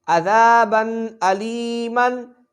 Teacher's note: تنوین کے بعد حمزہ آ رہا ہے اس لیے یہاں پر غنہ نہیں ہوگا